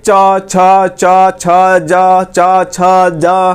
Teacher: अब देखिए च बोलिएगा ना, तो च बोल रहे हैं तो आपका जो जबानवा है ये आके है इस पर सट रहा है, यानी तालुए पे ऊपर में जाकर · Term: च वर्ग